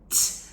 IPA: t